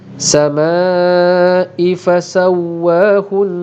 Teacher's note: alif mad bertemu dengan hamzah dalam 1 perkataan membawa hukum mad wajib muttasil dipanjangkan 4 ataupun 5 harakat.